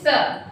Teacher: जब आपने स बोला तो आपकी जीभ किससे? तालु पे रखी हुई है। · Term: तालव्य